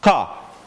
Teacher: The second sound is made by bringing the tongue farther down in the throat, lower than the velum, and making a stop there. It's sort of like you're about to gag-- kah, kah, kah-- but you don't.